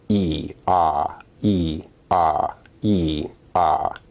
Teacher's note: E is an example of a high vowel, and Ah is an example of a low vowel. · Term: height